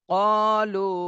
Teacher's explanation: এখানে লুতে 3 আলিফ টান দিতে হবে, যে 3 আলিফের চিহ্ন রয়েছে।